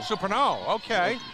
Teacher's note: Accent on the last syllable.